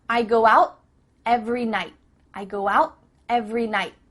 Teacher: your tongue is at the top of your mouth you're about to make the T sound but no air goes through